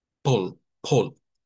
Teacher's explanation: Pareciera que hubiera algo en medio de la P y la L, pero no. Es la P chocando con un sonido consonante de una vez.